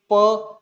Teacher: वही आप यदि कहेंगे प, तो हमारे होठ ओष्ठ जो है वह बंद हो जाते हैं